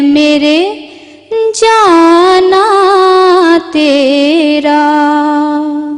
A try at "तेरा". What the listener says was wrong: तेरा नहीं, तेरा पढ़ा करो। आखिर पे तेरा करोगी तो वजन टूट जाता है। तेरा